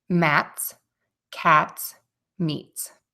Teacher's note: to pull your tongue down and away from your teeth and the air is going to Puff out but it's not a huge puff of air it's just a kind of a natural release we use this sound before an S sound mats cats Meats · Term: regular T sound